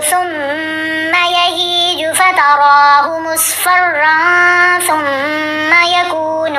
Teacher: دونوں جگہوں پر میم کے اوپر ہم نے غنہ کیا لیکن میم کو لمبا نہیں کیا